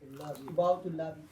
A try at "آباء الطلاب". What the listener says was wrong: Ah, yes. آباء الطلاب. Because it's mudaf and mudafun ilay. Right? Very good.